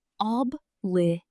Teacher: Notice the stress is on the third syllable.